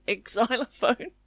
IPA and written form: ˈeksˌzaɪləˌfəʊn (exylophone)